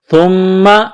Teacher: میم مشدد ہے، آواز ناک میں چھپائیں گے، غنہ کریں گے، سا کو نرم کرنا ہے